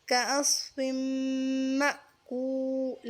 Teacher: یہاں واو مدہ ہے، اس کو ایک الف کے مقدار پر کھینچیں گے